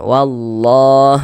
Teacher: Wallah lafaz Allah dibaca panjang